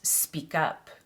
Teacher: So for example, we wouldn't say speak up, we'd say speak up. We link the K and the U sounds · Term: linking